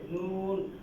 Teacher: নয় নম্বর মাখরাজ জিহ্বার আগা তার বরাবর উপরের তালুর সঙ্গে লাগিয়ে